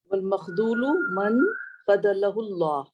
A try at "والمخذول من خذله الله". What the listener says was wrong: من مخذول. ذا کی آواز مجھے کچھ تھوڑی سی شاید سنائی صحیح نہیں دے رہی. ذا ہے نا، تو دال کی آواز آ رہی ہے مجھے. اس کو ہو سکتا ہے سگنل کی وجہ سے ایسا. والمخذول من خذلہ اللہ.